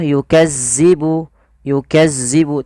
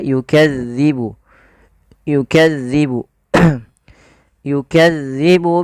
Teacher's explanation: huruf dalal dalal ini tidak boleh dibaca atau tidak boleh diganti dengan huruf Zai